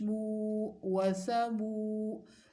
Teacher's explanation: میم واو پیش مو ہے، واو مدہ ہے، تو لمبا کرنا ہے اس کو ایک الف کے برابر